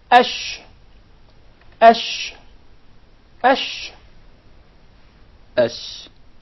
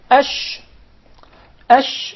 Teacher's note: there is a very noticeable elevation in the middle part of the tongue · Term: sheen